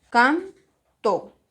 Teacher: ¿Dónde está la mayor fuerza de voz? En can.